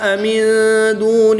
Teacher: نون ساکن کے بعد دال حروف اخفا میں سے ہے تو یہاں پر اخفا ہوگا، یعنی غنہ زبانی کر کے پڑھیں گے۔ وقف کی حالت میں نون کی زبر کو ساکن کر دیں گے، نون کی زبر کو جب وقف کی حالت میں ساکن کریں گے تو یہاں پر مد عارض ہوگی، 2 سے 3 الف تک کھینچ کر پڑھیں گے۔